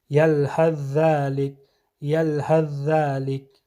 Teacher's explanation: ثا کا کوئی اثر باقی نہیں رہے گا، بلکہ آواز ادا کرتے وقت ذال کی آواز آئے گی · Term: ادغام